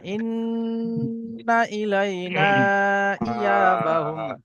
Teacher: ইন্নাটা গুণনা করুন, টান দেবেন না।